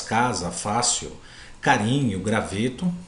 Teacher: com a penúltima sílaba tônica mais forte com mais intensidade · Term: paroxítonas